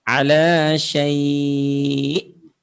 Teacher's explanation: Ala syai' ini aslinya adalah huruf hamzah ya. Oleh sebab itu, cara mengucapkannya ketika disukun itu dengan cara menekan. ala syai'. Nah, supaya lebih terasa keberadaan huruf hamzahnya.